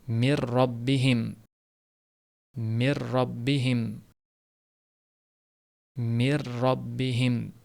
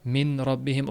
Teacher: Bunda ham nun butun tushib ketadi. O'zidan keyin kelap turgan ro harfi tashdid bilan o'qilinadi. G'unna bilan o'qilinmaydi. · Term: g'unnasiz idg'om